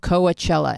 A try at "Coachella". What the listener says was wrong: Syllabically specific. You're too syllabically specific. Coachella.